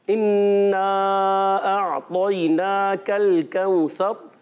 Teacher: इन्ना अतैनाकल कौसर, हमजा आइन क्लियर रखना है, तो मोटा रखना है, नून पर खड़ा जबर है खींच कर अदा करना है, काफ को बारीक रखना है